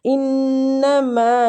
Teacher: نون مشدد غنہ کریں گے